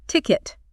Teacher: For ticket, the stress is also on the first syllable, ticket. Make sure you get that strong T sound at the beginning.